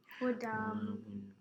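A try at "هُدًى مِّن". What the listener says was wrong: Yeah, so you have to do ghunna. Do you remember the ghunna rule? If a mim or a nun has a shadda, you will do ghunna. And do you remember what ghunna means? Heavy sound from the Yeah, so you have to remember that rule. So if a mim or a nun has a what? You will do what? Ghunna means? So which two letters do you do ghunna on?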